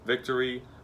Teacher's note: when you say victory your top teeth touched your bottom lip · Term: the letter v